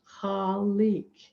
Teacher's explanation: And it's from the Arabic, and the sound has a kind of glottal sound at the beginning, khalik. And the Q at the end It's kind of like a K, but it's a little bit farther down in the throat.